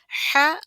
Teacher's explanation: وسط الحلق، حلق کا بیچ کا حصہ، یہاں سے 2 الفاظ ادا ہوتے ہیں، عین اور ح